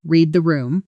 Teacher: in fast natural speech, the d at the end of read almost disappears into the t sound. It comes out closer to reth. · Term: blending